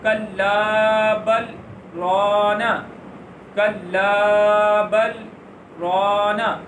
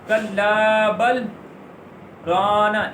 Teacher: آواز ختم کر دینی ہے اور جو سانس ہے وہ ختم نہیں کرنا، سانس جاری رکھنا ہے۔ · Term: سکتہ